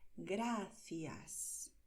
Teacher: este sonido se hace colocando la lengua entre los dientes, igual que en inglés cuando dices thank you